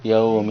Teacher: میم کو میم کے ساتھ ملایا ہے تو منہ کے اندر رکھا ہے